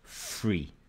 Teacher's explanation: only a few people around london said free with an f